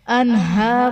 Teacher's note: انہار میں نون ساکن کے بعد حروف حلقی میں سے ہا ہے تو یہاں پر اظہار کا قاعدہ ہوگا، یعنی نون ساکن میں ہم غنہ نہیں کریں گے